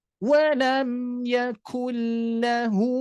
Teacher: Jadi tetap posisikan huruf kaf ini lebih depan daripada huruf qaf.